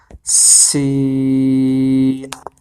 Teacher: سین کے اندر بھی جو ہے زبان کی نوک ہمارے دانتوں کے کناروں کو لگ رہی ہے، تو یہاں سے سین ادا ہوگا۔